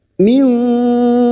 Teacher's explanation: Minkum, mim sukun lagi bertemu ya idhar syafawi. Mim sukun dibaca jelas tanpa mendengung.